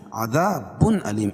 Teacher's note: تنوین کے بعد حروف حلقی کے 6 حرفوں میں سے حمزہ ہے تو یہاں اظہار حلقی ہوگا